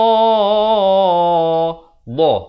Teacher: makhrajnya di tepi lidah